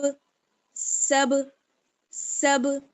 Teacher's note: با کا مخرج کیا ہے؟ دونوں ہونٹوں کی تری والا حصہ، آواز یعنی آپ کے جب آپ سین کو با سے ملائیں گی تب ہونٹ آپ کے بند ہی نہیں رہیں گے، بلکہ دونوں آپس میں ٹکرا کر الگ ہو جائیں گے، جیسے سین با زبر سب، سب سب. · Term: حروف قلقلہ